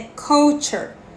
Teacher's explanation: ele tem um som que é uma mistura de A com O, não é culture e não é culture, é culture, mas o som dele se inclina mais pro O do que pro A.